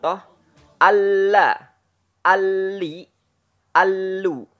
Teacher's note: ujung tepi lidah pada posisi gusi atas keluar darinya huruf lam